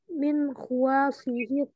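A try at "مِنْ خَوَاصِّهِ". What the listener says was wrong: min khawasihi. Kho-nya itu dibaca fathah. Min khawasihi, shadnya ditasydid.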